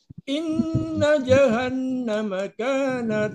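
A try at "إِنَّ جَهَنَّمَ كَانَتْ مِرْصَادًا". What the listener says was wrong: Bapak Jahan namanya kurang ditahan Karena itu adalah Gun musyadadah ya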